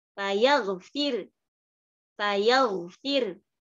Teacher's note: Ya berarti karena dia hukumnya mengikuti hukum saat waqaf, maka ro-nya dibaca tarqiq. Kemudian kita tambahkan isyarat dhammah di akhir. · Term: ismam